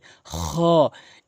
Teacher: খলকের শেষ থেকে এভাবে সাউন্ড করে খ এক আলিফ টেনে পড়বেন।